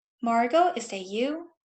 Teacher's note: Rising intonation on names or requests is commonly heard in addressing people.